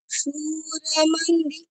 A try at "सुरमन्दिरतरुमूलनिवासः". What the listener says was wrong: না না না, আপনি দীর্ঘ উচ্চারণগুলো হ্রস্ব করছেন, হ্রস্বগুলো দীর্ঘ করছেন, সেটা করবেন না। হ্যাঁ, সৌরামন্দিরতরুমূল, এই মুতে গিয়ে দীর্ঘ উচ্চারণ। সৌরামন্দিরতরুমূলনিবাসः।